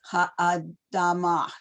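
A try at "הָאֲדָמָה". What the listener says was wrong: No, you don't hear a ch. It's a hey. You don't hear anything. Ha'adama.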